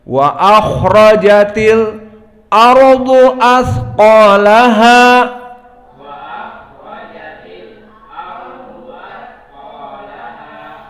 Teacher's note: Maka inilah 3 perbedaan qiraah dari ayat yang kedua, qiraah Khalaf an Hamzah, yang mana dia membaca saqt, tujuannya untuk menyesuaikan dengan hamzah yang makhrajnya deep di dalam, di aqsa al-halq